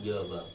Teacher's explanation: दो, य और व। संघर्षहीन, इनमें बिल्कुल घर्षण नहीं होता है। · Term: अर्ध स्वर